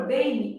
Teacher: Eu tenho um e funcionando como vogal e um I funcionando como semivogal mesmo que ele esteja representado pela letra M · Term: ditongo fonético